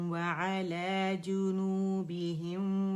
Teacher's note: نون ساکن پہ آپ نے 1 کاؤنٹ کے لیے جا کے اس کا اظہار کرنا ہے تاکہ آپ کو آواز اور غنہ ناک میں اس کا فیل ہو جو اس کی صفت لازمہ ہے.